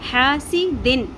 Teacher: اگلا حرف حمزہ ہے تو یہاں پہ اخفا نہیں ہوگا، اظہار ہوگا. نون ساکن کی آواز کو ہم نے ظاہر کر کے پڑھنا ہے، پراپرلی پروناؤنس کرنا ہے. حاسی دن، چھپانا نہیں ہے، دن کر کے چھپانا نہیں ہے.